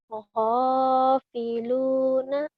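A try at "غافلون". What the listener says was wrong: Go bukan ho. Go. Iya bukan ho ya go.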